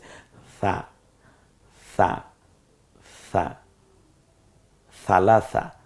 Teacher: জিহ্বার আগা সামনের দাঁতের আগার সাথে মিলিয়ে আপনি স বলুন, দেখবেন নরম হয়ে গেছে। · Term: নরম আওয়াজে